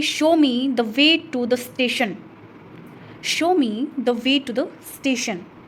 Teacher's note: जब हम कमांड देते हैं तो हम falling intonation का यूज करते हैं।